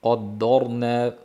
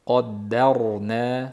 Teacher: Qa yo'g'on, da ingichka, ro yo'g'on.